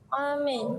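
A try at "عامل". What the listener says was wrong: Amil. Bukan amil, bukan huruf alif. Ain. Amil.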